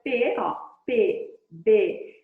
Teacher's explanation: é um som que vem totalmente para fora ele morre aqui então aqui você tem um bilabial explosivo